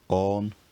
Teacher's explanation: The vowel rounds and raises over the Middle English period